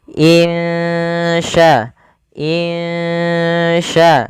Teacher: termasuk daripada huruf ikhfa maka kita hukumi dengan bacaan ikhfa Hakiki cara membacanya samarkan suara nunnya kepada huruf Sya